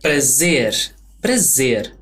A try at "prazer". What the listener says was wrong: Yeah, it's not prazer. Both of those R's have that flick thing, that flick sound, the prazer.